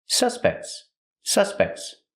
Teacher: The T in suspects is between consonants. So it's a stop T, but you don't really hear it.